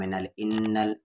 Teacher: نون پر اگر شد ہو یا میم پر تشدید ہو تو وہاں پر غنہ ہوگا، انل غنہ یعنی آواز کو ناک میں رکھنا ہوگا